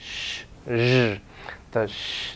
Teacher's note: Bend the tongue back a little bit more, post-alveolar, behind the alveolar ridge, okay, here, and you get the sh and the zh, sh, zh.